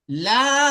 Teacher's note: এখানে দেখুন, লাম, লামের পর আলিফ এসছে, আলিফ হুরুফের মাদ্দার পরে হামজা এসছে, তো মধ্যে মুনফাসিল হবে, এখানে টান দিতে হবে, 4 আলিফ টান দেবেন আপনি, লা, এইভাবে টান দিতে হবে।